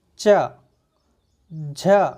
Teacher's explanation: आपकी जबान का अगला भाग है वो ऊपर कठोर तालु को स्पर्श कर रहा है